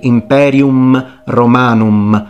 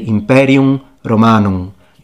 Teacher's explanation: at the end of words i know that's a shocker so a fully nasalized vowel